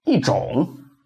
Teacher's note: And then number four. 一 changes into fourth tone when it goes with non-fourth tone syllable.